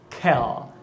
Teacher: Porque o dorso da língua sobe e você não tem o contato da pontinha da língua com os alvéolos. Então, o dorso da língua ele se aproxima mais lá do véu palatino, lá atrás, do que aqui na frente. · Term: velar